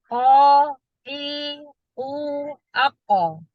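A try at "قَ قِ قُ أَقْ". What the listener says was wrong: Nah, jangan ako, ako. Iya, agak lebih lebih dicepat lagi. Jadi qalqalah itu tidak ada jeda, tidak terputus, tidak ada jeda, tidak ancang-ancang, tidak ada. Jangan ada. Kalau dia ada, itu seperti ako, itu seperti ada tasdid, ya. Jadi ako.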